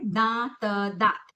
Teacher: जिन शब्दों को बोलते समय हमारे नाक और मुंह दोनों का इस्तेमाल होता है उसे हम चंद्र बिंदु कहते हैं।